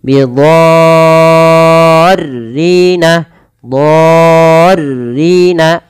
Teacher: Dha di sini wajib dipanjangkan 6 harokat teman-teman, bukan lagi 4 atau 5. Tapi 6 harokat. · Panjang dulu 6 harokat baru masukkan tasydid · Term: mad lazim